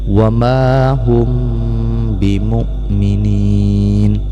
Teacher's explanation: Karena kita menyamarkan bunyi mim mati ke dalam ba, yaitu menyembunyikan bunyi mim mati ke dalam ba sehingga bunyi mim mati ini agak samar, ataupun bunyi mim mati ini disamarkan suaranya. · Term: ikhfa syafawi